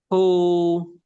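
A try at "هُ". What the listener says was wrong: belum sempurna. Keluarkan udaranya aja. Nah, ketika disukun Ambil sukunya aja. Ah, ketika sudah diambil sukunya kita domahkan. Hu, hu, hu. Ini yang keluar cuma domahnya aja. Jadi hu langsung hu nggak ada ancang-ancangnya. Jadi kalau bisa itu dikasih ancang-ancang gitu. Ada ancang-ancangnya. Hu baru di doma.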